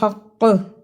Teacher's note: ہم نے اس کو حق قلقلہ کر کے روک دیا